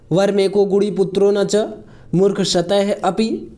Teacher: यह विसर्ग का एक ओ हो गया है ग आने की वजह से